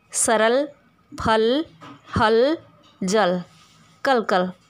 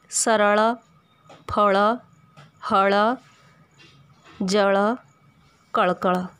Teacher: ल का उच्चारण हिंदी में ल ही होता है, जबकि ओडिया में ल और ळ दो ध्वनियाँ हैं।